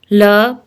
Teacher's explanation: ल पार्श्विक है, जिसका उच्चारण में हवा जीभ के पार्श्व बगल से निकल जाए